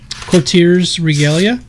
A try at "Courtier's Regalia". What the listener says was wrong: Isn't it the Courtier's? I didn't hear you say the co part of it. All I heard was Tears Regalia. Courtier's Regalia.